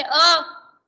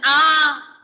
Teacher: जैसे अ ज्यादा समय नहीं लगेगा, आ इसको हम लंबा खींचेंगे ज्यादा समय लगता है